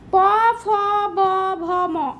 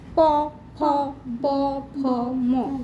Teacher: প ফ ব ভ ম এগুলো উচ্চারণ করতে দুটো ঠোঁটের সঙ্গে ঠেকছে। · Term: ওষ্ঠ বর্ণ